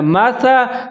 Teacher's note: आगे सा है, इसको सीन नहीं पढ़ना, इसको सीटी नहीं बजानी, सा पढ़ना है। मासा, सा ज़बर सा, मसला लिखा हुआ है, लाम ज़बर दो, लन दो ज़बर हैं, लेकिन जहाँ मीम लाजिम वक्फ लाजिम आ रहा है, जहाँ पर हम वक्फ करेंगे सांस को तोड़ दें, जैसे मसला बिहाज़ा मसला।